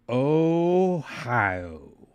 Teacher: The O would be drawn out, followed by a smooth, connected hi-yo, emphasizing the natural flow of the sounds.